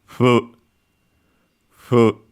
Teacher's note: similar to an F, like in English and other languages, but bilabial in this case, so with both pronounced with both lips instead of labiodental, and so the bottom lip and the teeth.